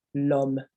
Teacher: Okay, so the L is almost like the first letter, the first sound of the word. So you don't leave a gap between the L and the om.